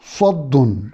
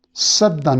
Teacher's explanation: سواد کو موٹا سین کو باریک، سیٹی کی آواز تو دونوں میں ہے